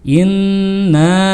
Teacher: didengungkan in nah seperti itu harus berasa ke rongga hidung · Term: berguna